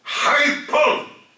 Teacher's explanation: the fundamental frequency rise up and go down again